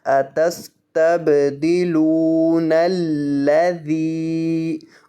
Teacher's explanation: یہ جو ذال ہے اس کو لمبا کریں گے، اس کے بعد یا مدہ آ رہا ہے